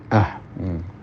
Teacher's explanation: makhrajnya sama dengan hamzah tetapi cara mencekikkan atau mendekatkan dinding-dinding tenggorokan satu sama lain itu agak berkurang. Bukan a tapi ah.